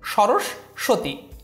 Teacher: যদিও এটা দন্তস্য দিয়ে লেখা কিন্তু উচ্চারণের সময় এখানে তালব্যস বিবেচনা করে উচ্চারণটি করতে হবে